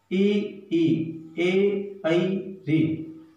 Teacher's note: अग्र स्वर, अग्र स्वर जिन स्वरों के उच्चारण में जीवा के आगे का भाग, यानी जीभ का आगे का भाग जहां सक्रिय रहता है उसे अग्र स्वर कहते हैं। जीभ के आगे का भाग।